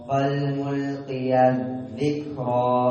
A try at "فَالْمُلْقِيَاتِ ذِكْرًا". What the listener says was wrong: طويل أولا. فالملقيات ذكرا.